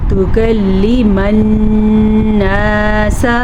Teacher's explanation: نون کا غنہ ادا کریں گے کیونکہ نون پہ شد ہے